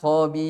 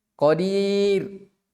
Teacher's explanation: Dibaca tipis karena dia didahului oleh ya sukun